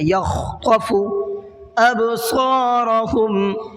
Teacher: با میں تھوڑا سا قلقلہ کرنا ہے، آواز کو ڈبل کر کے پڑھنا ہے، اور صاد کو تھوڑا سا منہ بھر کے پڑھنا ہے۔